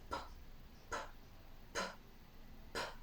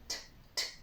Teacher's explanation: without a vowel, just p, p, and there's no vibration in your vocal cords. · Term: voiceless